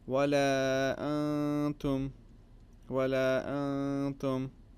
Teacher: the noon is prolonged for a couple of seconds. This is the gunna sound.